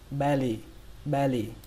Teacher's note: trọng âm của nó rơi vào âm đầu tiên, âm be, và âm thứ hai là âm lì. Các bạn xuống giọng lì, lì trong chữ lì lợm, belly belly.